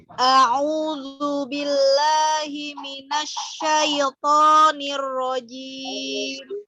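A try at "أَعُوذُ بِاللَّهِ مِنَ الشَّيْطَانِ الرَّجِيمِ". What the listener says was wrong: Ya, linnya jangan ditekan. Himinasyai. Ya, karena lin itu artinya keluarnya huruf dari makhrajnya tanpa membebani lidah ya. Jadi santai aja. Syai ya. Himinasyai.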